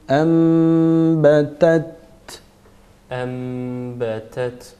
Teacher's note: Mim gunne harfi olduğu için biraz gunne vereceğiz.